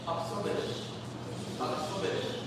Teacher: So you can drag out this SH, but just not the I.